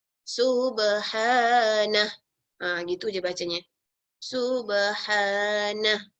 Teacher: kalau kita akhiri bacaan dengannya, maka dia hanya disebut jadi ha yang mati.